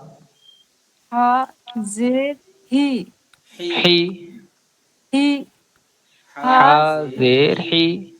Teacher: جو حلق کے جو بیچ کا حصہ ہے وہاں سے کوشش کریں نکالنے کی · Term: درمیان حلق سے